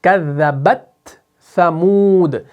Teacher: ता को भी साफ अदा करेंगे, ज़ाहिर करेंगे, और सा को भी साफ और ज़ाहिर करके पढ़ेंगे